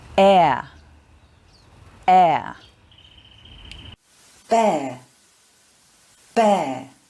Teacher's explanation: There are 3 diphthongs that end in the schwa sound, end in the sound a.